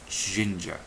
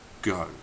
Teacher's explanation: the G is made using the middle of the tongue on the hard pallet instead of the edges of the tongue Tong on the soft